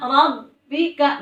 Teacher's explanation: ba-nya ditahan karena ada tasydid